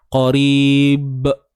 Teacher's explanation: pada huruf ba, bila kita lantunkan janganlah bunyi hamzah tu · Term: lantunan qalqalah kubra